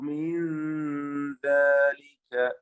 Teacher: സകിനാനൂൻ ഇഖ്ഫ ഹഖീഖി നൽകി മണിച്ചുകൊണ്ട് അവ്യക്തമാക്കി മറച്ചു മണിച്ച് ഓതുക